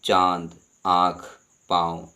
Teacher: अनुनासिक में नाक और मुख से दोनों से किया जाता है उच्चारण इनका